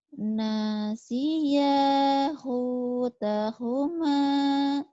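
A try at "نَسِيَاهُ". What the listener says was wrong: Nasiya panjang. Nasiyahu tahuma.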